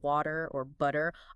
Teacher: That T sound, especially between vowels, like in water or butter, often becomes what linguists call a flap, sounds kind of like a soft D.